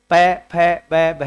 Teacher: प फ ब भ में जब ऐसे बोल के देखेंगे आप तो आपके होठ आपस में मिलते हैं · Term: ओट वर्ण